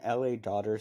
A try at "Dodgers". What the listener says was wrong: LA Dodgers. You said LA Dodgers. It sounded like daughter. Your accent kicked in.